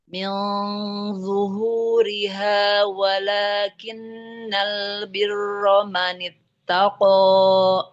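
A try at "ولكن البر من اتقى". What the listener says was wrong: Koknya tapi kepanjangan Ibu. Walakinnal birra manittaqo.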